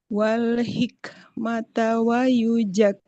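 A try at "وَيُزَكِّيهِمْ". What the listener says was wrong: Nah, nggak boleh wa yujak. Huruf zai seperti z. Wa yuzah. Nah, wa yuzakkihim.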